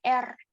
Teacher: artikulator aktif melakukan kontak beruntun dengan artikulator pasif sehingga getaran bunyi terjadi berulang-ulang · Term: getaran atau trial